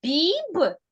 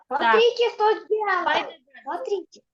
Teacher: А у слові біб звук Б приголосний м'який